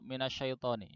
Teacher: syaddah pada shin itu hilang. Akhirnya bacanya tidak ditahan, langsung begitu minasyaitoni ya, minasyaitoni.